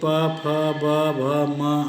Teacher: जब दोनों ओठ एक दूसरे को स्पर्श करें, निःश्वास की वायु ओठ तक पहुंचकर क्षण भर अवरुद्ध होकर आगे आए तो द्विओष्ठीय ध्वनि का उच्चारण होता है, जैसे प, फ, ब, भ, म आदि।